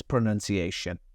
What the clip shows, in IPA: ʌv bɪn